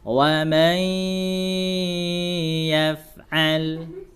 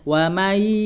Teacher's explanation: Cara caranya gimana? Diidghamkan ke huruf ya, kemudian dimasukkan ke pangkal hidung karena harus bi gunnah dia. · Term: idgham bi gunnah